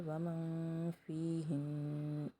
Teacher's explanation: نون ساکن کے بعد فا اخفا کریں گے